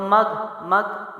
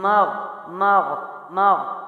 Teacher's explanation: یہاں پر گاف نہیں پڑھنا، یہ یاد رکھیے گا، گاف جو لیٹر ہے وہ پورے قرآن میں نہیں ہے، تو مگ مگ نہیں کرنا، اللہم مغ مغ، یہ حلق سے ہے، موٹا حرف ہے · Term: غائن